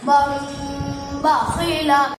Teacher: نون ساکن تنوین میم سے بدل کر ایک الف کے برابر غنہ ہو کر پڑھا جائے گا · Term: ابدال